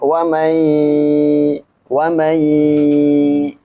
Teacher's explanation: nun mati bertemu dengan ya dia dibaca apa? Idgham bighunah.